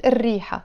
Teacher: the R is a sun letter, so we have to not pronounce the L of the L. So instead of saying الريحة, we pronounce it الريحة.